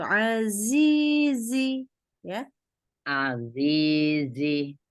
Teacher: Sebenarnya masih belum itu tuh giginya ngerapat ya gigi agak rapat gigi agak rapat lidah tuh lidahnya tuh juga agak merapat gitu sama ujung ujung giginya jadi bunyinya tuh kayak disiulin gitu